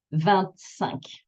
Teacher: when I say another number after for 25, then the T appears